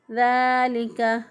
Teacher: الف کے برابر لمبا کر کے ہم نے پڑھا عَلَى ذَلِكَ، ذال کھڑی زبر دا ایک الف کے برابر اس کو بھی لمبا کیا